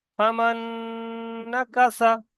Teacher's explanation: প্রথম নুনটা বাদ দিয়ে দ্বিতীয় নুনের সঙ্গে মিলিয়ে পড়তে হচ্ছে। এখানে নুনের উপর তাসদিদ আছে।